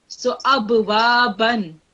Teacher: when you have fathatain, it would not be ba, it would be ban